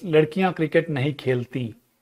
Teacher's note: The helping verb is dropped and the nasalization is moved to the participle, khelti.